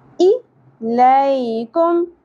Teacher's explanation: حمزہ زیر ای، اس کو ہم شارٹ ہی رکھیں گے، زیادہ نہیں کھینچنا